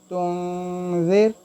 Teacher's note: यहाँ ज़ाल है तो ज़ाल हुरूफ़ इक्फ़ा में से है, इसलिए हम इस नून साकिन को इक्फ़ा करेंगे, यानी आवाज़ को नाक में छुपाएंगे